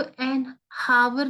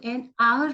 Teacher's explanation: A word beginning with H, but the pronunciation start with a vowel.